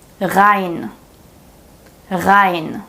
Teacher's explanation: Since the R is placed at the beginning of a word, we pronounce it with the consonantal R or the real German R.